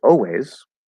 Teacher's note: colored o always that's a very common way to say it we can also drop the l completely